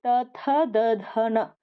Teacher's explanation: sound pronounce ಮಾಡುವಾಗ ನಮಗೆ ನಾಲಿಗೆ ಬಂದ್ಬಿಟ್ಟು ಹಲ್ಲನ್ನ ಮುಟ್ಟುತ್ತೆ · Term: ತ ವರ್ಗ